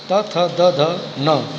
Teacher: त वर्ण त थ द ध न दंत से उच्चारित होते हैं